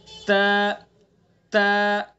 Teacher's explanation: ता का मखरज है जबान की नोक और सना उलिया की जड़।